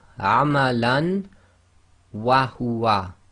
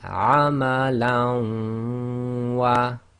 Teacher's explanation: So Lam with Fathatain followed by Waw, one of the Yarmalun letters, and it's done with Ghunna because it's one of the human letters. So we read the Waw as if it's got a shadda. So this will be Amalan wa Ghunna and assimilation.